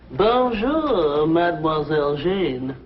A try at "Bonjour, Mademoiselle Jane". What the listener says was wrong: That's very good. Except for the mwah. Must be soft. Mwah.